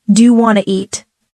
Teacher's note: The sounds blend. Sometimes letters are dropped like the n in want to